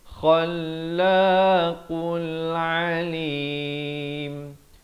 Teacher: Di sini ada lam qamariyah, lamnya dibunyikan. Qaf bari dhammah naik di atas lam.